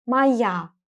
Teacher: The letter O is going to be pronounced as A because it's unstressed.